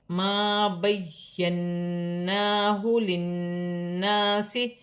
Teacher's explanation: نون مشدد پر کھڑی زبر بھی ہے، ایک الف کی مقدار کھینچ کر بھی پڑھا جائے گا